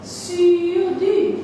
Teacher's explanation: Dans la position articulatoire d'un OU, tu prononces un I. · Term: Le son U